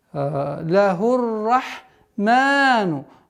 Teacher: с огласовки даммы уходим на удвоенный ра